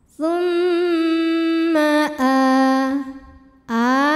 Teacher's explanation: cara bacanya dengung jadi bunyi M tahan sampai ada suara masuk hidung kurang lebih dua harakat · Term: ghunah musyaddadah